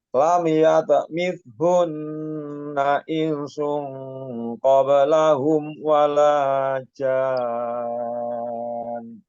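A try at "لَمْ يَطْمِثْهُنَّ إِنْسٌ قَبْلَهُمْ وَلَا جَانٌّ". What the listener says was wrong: Sebentar, insungnya. Ingnya tadi kurang dengung. Coba ulang lagi.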